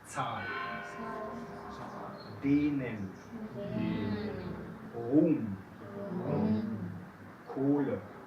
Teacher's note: Entonces, si después de un vocal viene una H, dentro de la sílaba, entonces tiene la función de hacer largo este vocal. Y no se escucha la H. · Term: alargar vocales